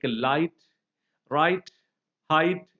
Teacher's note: GH, that combination sound that is also dropped from words like light, right, height